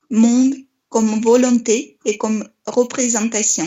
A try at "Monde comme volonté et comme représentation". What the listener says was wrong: Oui, c'est très très bien, vraiment. Il y a pratiquement aucune erreur.